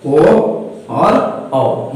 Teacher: ये दोनों स्वर है और इनका उच्चारण में कंठ और ओठ दोनों सहयोग करता है। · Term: कंठोष्ठ ध्वनियां